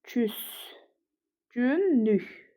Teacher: L da N-ya çevrilib. Ona görə samit cütlüyü yəni var